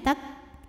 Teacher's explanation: huruf kaf selain syiddah dari segi suara kuat ya, tertahan ketika kita tekan terhadap makhrajnya, tak, juga punya sifat hanas dari segi angin, yaitu keluar angin.